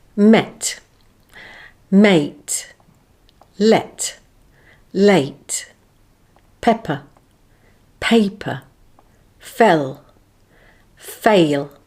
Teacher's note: the first word has the first monothong e followed by a similar sounding word with the diphthong a